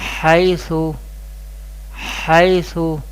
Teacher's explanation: This is zabar before ya sakin, this is ya leen, and leen letters we pronounce without stretching